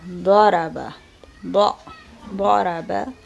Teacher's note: اکثر مشہور قاریان قرآن کی تلاوت پر اگر دقت کیا جائے تو مشخص ہو جاتا ہے کہ حرف ضاد کو دال مفخم کی طرح ادا کرتے ہیں